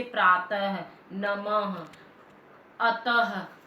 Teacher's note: विसर्ग ध्वनि ह का अस्फुट रूप है। यह अन्य अयोगवाही ध्वनियों की तरह स्वर के बाद प्रयोग होता है।